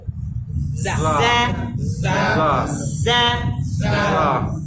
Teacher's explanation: দেখেন যা উচ্চারণ হয়, উপরের দাঁত নিচের দাঁত একসাথে লাগবে, জিহ্বা এসে পাশে যাবে।